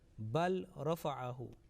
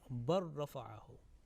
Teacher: Now in this case, lam sakin is followed by ra, bal, and the second word is rafa'ahu. And here, when lam sakin is followed by ra, lam is dropped, is completely merged and assimilated with ra.